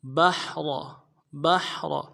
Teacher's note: با کو حا کے ساتھ ملانا ہے، حا کو گہرائی سے ادا کریں گے، اور را کو موٹا کریں گے